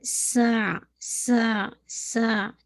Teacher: آپ کو سین کی فتح کو واضح کرنا ہے اور پھر عین کو مرج کرنا ہے